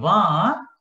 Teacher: When you say va, you are using the teeth as well as the lower lip.